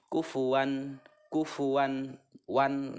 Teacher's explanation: Apabila ada tanwin bertemu dengan Hamzah ini adalah Idhar cara membacanya itu jelas dan tidak mendengung kufuwan kufuwan one Jelas terdengarnya oke seperti itu mengenai izhar selanjutnya